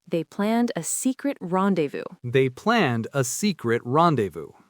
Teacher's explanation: The z and the final s are silent, just like in French.